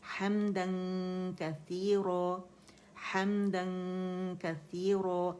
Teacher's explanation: اسے نون کو ہم چھپائیں گے اور کیف کے مخرج کے قریب جائیں گے غنہ کرتے ہوئے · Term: اخفا